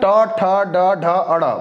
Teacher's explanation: अब जो हमारा जीभ है ना, देखिए ध्यान दीजिए, जो तालु है, तालु के और आगे आइए, जो मूर्धा, जीभ को हल्का से मोड़ते हैं, तालु को टच करते हैं या थोड़ा सा स्पेस बनाते हैं, फिर उसके बाद प्रेशर से जीभ को आगे फेंकते हैं